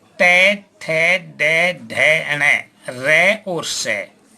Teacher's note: इन समस्त वर्णों का उच्चारण मूर्धा से होने के कारण ये मूर्धन्य कहलाते हैं